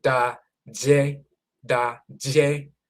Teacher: amongst the Fanti, they don't say da-de, they say da-je, da-je. It's a softer D, which becomes a za, za, ja.